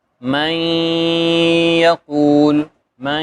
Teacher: نون جو ہے وہ یا کے ساتھ مل بھی رہا ہے اور ساتھ میں اس کی صفت غنہ بھی ادا ہو رہی ہے